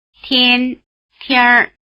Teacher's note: notice that the N drops out when the R is added and also that the vowel sound changes. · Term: R ending